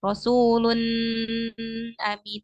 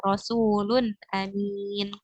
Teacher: Dia enggak ada gunnahnya. Biduni gunnah. Jadi nggak boleh bacanya itu ditahan lama-lama. Misalnya Rasulun amin itu enggak.